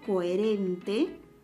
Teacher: coherente presenta la secuencia de una vocal abierta con una vocal abierta también, o E. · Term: hiato simple